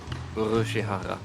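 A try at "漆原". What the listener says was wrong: And also one of those H's turned into an R.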